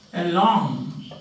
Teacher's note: Well, has two syllables. Disyllabic prepositions are there. They also take their stress or accent on the second syllable.